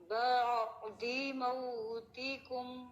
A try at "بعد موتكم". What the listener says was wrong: ٹھیک ہے، شاباش، ابھی ٹھیک پڑھا گیا.